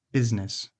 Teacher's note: So that middle S is a voiced Z.